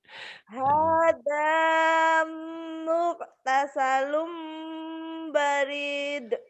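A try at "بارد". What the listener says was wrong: Banyak panjang, Mbak.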